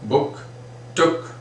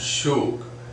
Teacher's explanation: In book, I reduced the sound, it's not that prolonged one, but in shook, it is quite a prolonged sound